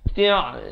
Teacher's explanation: Ain itu jelaskan di pertengahan kerongkong.